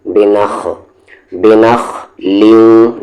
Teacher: خا پڑھیں گے نہ کہ کھا، بنخ نہیں، بنخ، بنخ لیوں۔